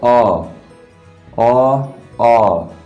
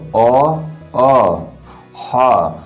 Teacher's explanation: आप बोलोगे तो खुद आपको ऐसा महसूस होगा कि यहाँ पर हम लोगों के कंठों का यूज हो रहा है